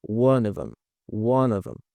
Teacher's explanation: O F, ele tem um som de V, bem parecido com o nosso V no português, tá bom? E o O, ele tem um som parecido com o schwa no inglês